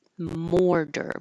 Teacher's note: The T will sound like a D, mortar, but you have to round your lips.